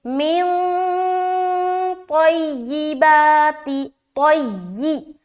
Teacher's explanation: اخفا کا قاعدہ بنا. لہٰذا نون کی آواز کو ناک میں چھپائیں گے